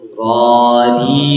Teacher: Jadi ketika berharokat fathah, kemudian dhammah, dan juga ketika disukunkan itu diangkat pangkal lidahnya supaya membentuk kesan tebal dari huruf ro ini